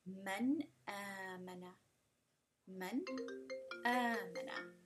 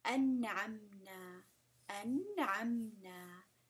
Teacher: there's a complete distinction between the nun sound of the nun sakin or tanween and the next letter that follows in the next word or in the same word.